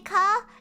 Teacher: when I say car, I don't say the R.